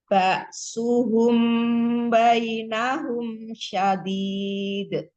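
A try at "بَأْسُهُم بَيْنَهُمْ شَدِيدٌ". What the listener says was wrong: Shinnya tipiskan lagi. Syah. Jangan terlalu meninggikan. Ini tipiskan. Syah. Mm-mm. Ditahan. Mim sukun ketemu baknya. Ba'suhum bainahum syadid.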